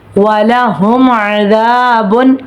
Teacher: میم ساکن کے بعد عین آ رہا ہے، اظہار شفوی کا قاعدہ ہو رہا ہے